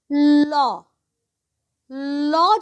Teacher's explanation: ল, ল যখনই বলছো দেখো তোমার জিভটা কিন্তু গুটিয়ে গোল হয়ে গেছে, আর হাওয়াটা, শ্বাসবায়ুটা জিভের দুপাশ দিয়ে বেরোচ্ছে, সেই জন্যই লটাকে বলা হয় পার্শ্বিক ধ্বনি।